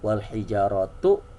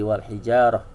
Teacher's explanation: tamar butoh kalau dihentikan jadi ha